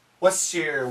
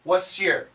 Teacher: the S is very strong. It's a strong sound and it can cancel the T. So what's, the faster, was.